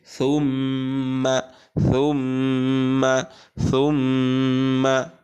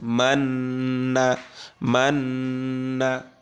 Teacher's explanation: সাপেশ মিমে তাসদিদ জবর, তাহলে এখানে একটা গুন্না হবে, মিমে তাসদিদ, নুনে তাসদিদ, একটা একালিফ টেনে গুন্না করতে হবে